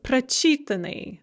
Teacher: So if the stress is on the at in the infinitive, the stress is going to shift one syllable to the front of the word or one syllable to the left if you're looking at the written word in the past passive participle. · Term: the stress tends to shift